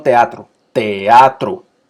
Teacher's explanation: como son ambas juntas y ambas son abiertas se separan